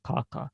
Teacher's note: Другой необычный звук для изучающего после русского языка является увулярная согласная «к». Увула — это язычок, который мы видим, когда, например, ну, мы, может быть, не часто видим, чаще видит доктор, когда мы показываем ему горло.